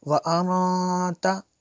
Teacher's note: यहाँ पे इख्फ़ा होगा क्योंकि नून साकिन के बाद ता और रुफ़े इख्फ़ा में है से है, इसलिए गुन्ना किया।